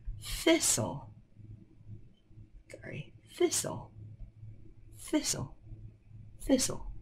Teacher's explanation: the word is thistle so it's actually an unvoiced th